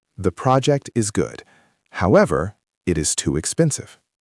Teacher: I will say the first part, then I will say however and pause slightly before the second part. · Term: rhythm